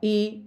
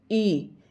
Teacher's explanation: छोटी इ है इसका उच्चारण हम जल्दी करेंगे और बड़ी ई का जो उच्चारण है उसमें थोड़ा सा समय लगेगा। तो इ ई आप देख रहे होंगे कि तालु जो है बिल्कुल मुड़कर रह जाती है।